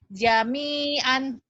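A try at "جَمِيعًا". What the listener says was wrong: Jami'an. Ainnya kurang keluar tuh. Jami'an. Jami'an.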